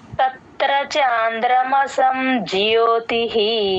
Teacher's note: ఇక్కడ విసర్గ హి అవుతుంది · త కింద రకారం ఉన్నప్పుడు త కి త ని జాయిన్ చేసి చెప్పాలి తత్ తత్ అని తత్ర తత్ర అనేయకూడదు తత్ర చాంద్రమసం జ్యోతిహి ఆ ఇక్కడ · జ్యోతి అనకుండా జ కి య వ ఒత్తు ఇంకొంచెం వినిపించాలమ్మా